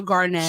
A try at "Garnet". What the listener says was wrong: Why are you saying Garnett? No, you're not saying Garnet. You're saying Garnett. You see the difference?